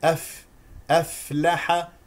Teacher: الفاء فيها همس اعطيها حقها من الهواء لكي تسمع الفاء